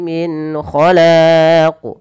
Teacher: ada qalqalah pada lafal huruf qaf dan wajib dipantulkan sebagaimana huruf dal. Dan kesalahan yang sama, kesalahannya yang membaca qalqalah itu tidak mantul dan menambah hamzah.